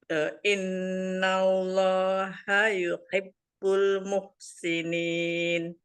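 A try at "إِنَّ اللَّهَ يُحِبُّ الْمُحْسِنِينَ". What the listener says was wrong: Nah, kan haknya itu yang lafaz jalalah itu, nah itu ha besar. Ini Bunda dibacanya nih semua hanya sama semua makanya jadi bingung gitu. Makanya hampir semuanya dari tengah semua kedengeran di kuping saya gitu ya. Nggak apa-apa sih kalau maksudnya memang ke situ.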